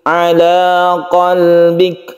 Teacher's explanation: Kaf ini bersifat Hames atau mahmus sehingga ketika sukun kita hembuskan nafas sedikit qbik Al qbik kemudian kita berhenti di sini karena ada waqaf